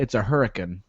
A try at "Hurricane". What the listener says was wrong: You're even kind of leaving further, pronouncing the I. It's usually just hurricane. Roll that stuff together as much as you can, man.